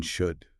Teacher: the vowel in should is basically a schwa